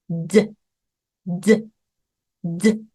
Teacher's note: 공기를 막았다가 드 드 드 성대 울림만 넣어 주시면 되겠죠 드 드 드 이때 으 받침 넣으시면 드드드 아니죠 드 드